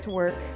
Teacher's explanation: slightly stretched out longer used with emphasis and a higher pitch do you hear how the music or intonation Falls at the end of the word work work and all the words in this phrase are linked together